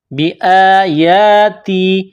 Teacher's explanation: حمزہ کے اوپر کڑا زبر ہے. یا کے اوپر کڑا زبر ہے. ایک الف کے برابر کھینچنا ہے اس کو